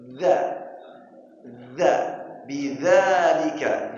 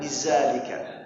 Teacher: Dha itu waktu bacanya ujung lidah keluar dikit dari gigi, di antara gigi. Dha, dha, bidzalika, jangan bizalika.